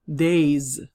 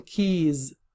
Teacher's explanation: The ending pronunciation of S will also change. S will turn into a Z.